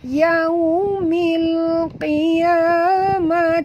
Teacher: alif lam qamariyah bunyikan lam yang mati dengan jelas Yaumil qiyamati wa min huruf qaf tebal walaupun baris bawah kita